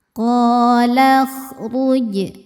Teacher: Qakhruj. Huruf ro dibaca secara tafkhim karena ro berharakat dommah. Cara bacanya ro ditebalkan.